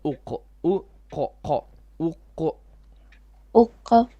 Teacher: So la, and then qalqala on the qaf.